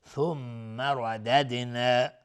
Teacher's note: میم مشدد دو حرکت غنه میدیم. ردد را حکمش استعلا چون فتحه داره.